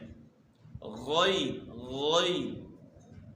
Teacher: غین کی آواز جو ہے گلے کے شروع سے نکالنی ہے، جس طرح آپ غرارہ کرتے ہیں، پانی منہ میں جو ہے نا ڈال کر جو ہے غرارہ کرتے ہیں، تو یہیں سے اس کی آواز نکلے گی، یعنی گلے کے شروع سے آواز نکالنی ہے۔